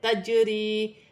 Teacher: جیم حرف قلقلہ میں سے ہے، قلقلہ کے ساتھ پڑھا جائے گا، یا ساکن سے پہلے زیر ہے، یا مدہ بنے گی، 1 الف کی مقدار کھینچ کر پڑھا جائے گا۔